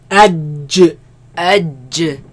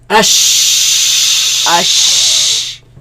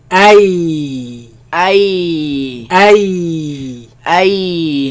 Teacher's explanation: They come from the middle of the tongue against the middle of the upper palate.